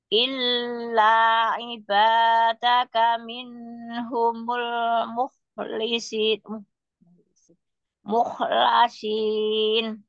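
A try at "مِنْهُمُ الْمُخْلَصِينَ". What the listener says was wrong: Jangan mine, jangan mine, tapi min humul mukhlasin. Illa ibadaka min humul mukhlasin. Jangan mine, min humul. Huruf nun juga. Min humul. Min humul mukhlasin. Jangan pakai mukho tapi mukhlasin. Jadi dia apa tidak putus bersambung terus tidak apa ya namanya tidak boleh mencuri nafas loh. harus nafasnya terus menyambung.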